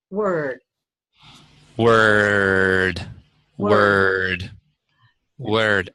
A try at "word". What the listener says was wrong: still closing it off just a little bit. Drop your jaw a little bit when you say it. Let's almost non-roticize it. Let's say word. Now just a tiny bit of bar. Word. You feel the resonance there as opposed to word?